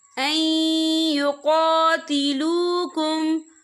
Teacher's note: नून साकिन के बाद जो है या आ रहा है, या जो है रुफ़ यरमलून में से है, तो यहाँ पर इदगाम होगा, तो हम यहाँ थोड़ा सा गुन्ने के साथ पढ़ेंगे